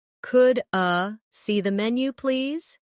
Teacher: In fast speech, could I sounds like could a